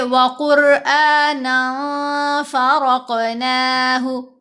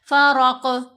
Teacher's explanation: را کو موٹا بھی پڑھنا ہے اور کاف پر قلقلہ بھی کرنا ہے